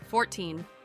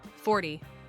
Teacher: the teen numbers have a strong stress on the second syllable